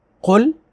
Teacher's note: قاف کو پر پڑھیں گے، حروف مستعلیہ ہے